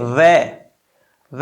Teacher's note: वह बोलेंगे तो दांत आपके होठों से लगेगा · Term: दंतोष्ठ्य